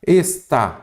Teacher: a sílaba tônica é a última, então é oxítona